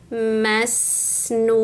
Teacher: bunyi sin sukun itu mengalir teman-teman jadi seperti ada bunyi mendesisnya ya namanya shofir masnun Nah, ini sifatnya rukhwah, mengalir bunyinya.